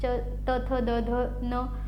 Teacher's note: त थ त थ द द बरोबर आहे दाताचा स्पर्श किंवा जिभेचा स्पर्श दाताला होतोय तर ते उच्चारले जातात वर्ण